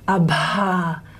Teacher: a special state that we talk about in linguistics called breathy voiced. So it's in between voiced and voiceless. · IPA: [bʱ]